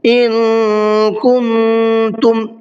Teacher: ان کے اندر بھی اخفا ہوگا اور کن کے اندر بھی اخفا ہوگا